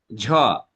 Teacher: যখন বাতাসের জোর থাকছে একই সাথে কম্পন থাকছে, অতএব আমি বুঝে নিচ্ছি এবার কম্পন এবং জোর, ফলে মহাপ্রাণ এবং ঘোষ।